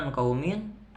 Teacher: Ada nun sukun bertemu dengan salah satu huruf ifa hakiki yaitu kha. Dibacanya samar-samar.